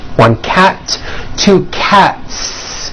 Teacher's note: Again, the S ending is unvoiced.